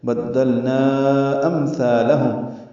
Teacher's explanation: بدلنا امثالہم، اس میں 2 میم ساکن ہیں، دونوں پہ اظہار شفوی ہے